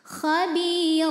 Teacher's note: Sukun didahului kasrah maka huruf ba Ini panjang dua harakat Khabir huruf ro dibaca secara tafkhim karena barisnya di atas tanwin fathah maka dibacanya tebal pangkal lidah dinaikkan